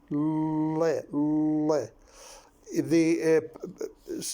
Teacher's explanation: Instead of the breath passing down the center, not in the center of the mouth, it passes round the side, passes the airstream. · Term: lateral sound